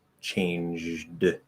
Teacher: fully enunciated, if I say the word changed, there's no devoicing at all.